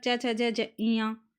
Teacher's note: जो च वर्ग है वो हमारे तालू से बोला जाता है